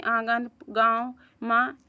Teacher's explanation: अनुनासिक चंद्रबिंदु स्वरों का उच्चारण स्थान नाक और मुख की सहायता से होता है